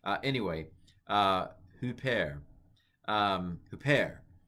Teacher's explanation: The accent's on the second syllable.